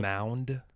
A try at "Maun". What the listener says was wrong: Mound. No D. Maun. Maun.